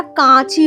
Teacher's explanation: নাসিক্য ব্যঞ্জনের প্রভাব ছাড়াই স্বরধ্বনির উচ্চারণ চন্দ্রবিন্দু যুক্ত হচ্ছে, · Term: সানুনাসিক